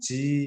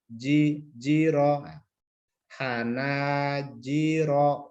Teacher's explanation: mengucapkan jim tidak keluar hembusan nafas, bukan ji tapi jiro.